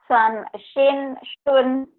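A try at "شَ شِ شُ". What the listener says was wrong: kurang angin ya. shan shun. Bu, jangan san shin, jangan ada e-nya. Shan shin shun.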